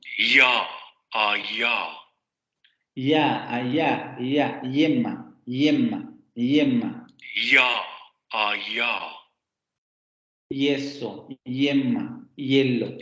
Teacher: Vibración de cuerdas vocales y salida del aire continuo. · la lengua se pone un poco más arriba de la posición alta o de la posición anterior, entonces se sube un poquito más para llegar al paladar, por ahí va a salir el aire, pero la lengua no se pega tanto como para producir una consonante, ni se aleja tanto como para producir una vocal. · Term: Palatal aproximante sonoro